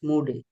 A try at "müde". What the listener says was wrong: müde। এটা মুডে হবে না, এটা যেহেতু ইউরোপের উমলাউট আছে, ওই জন্য বলবে হচ্ছে müde। একটু বলা যায় ঠোঁটটা থাকবে হচ্ছে একদম কিছুটা গোল টাইপের, ঠিক আছে?